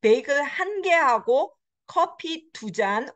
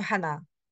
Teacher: 하나 became 한. It became squished into one syllable.